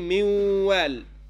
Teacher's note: When I say miwal, now the nun, the existence of the nun has disappeared, but there is a ghunna that you hear. You cannot say this ghunna is what the attribute of the next letter, which is the waw, because waw does not have ghunna as an attribute. · this ghunna that we hear is the attribute of the nun sakina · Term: idgham bighunnat al-naqs